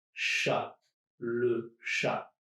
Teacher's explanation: pronounced like a /sh/, not a /tsh/ like in English